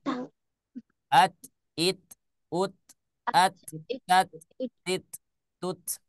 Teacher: ha ha Heeh Gimana bacanya bacanya izhar semuanya dibaca jelas ya kalau huruf ta ketika dia sukun maka keluarkan salah satu sifatnya yaitu sifat Hamas